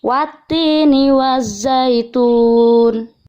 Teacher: ada alif lam yang tidak terbaca jadi cara membacanya dimasukkan ke huruf berikutnya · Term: bacaan Syamsiah, bacaan samsiyah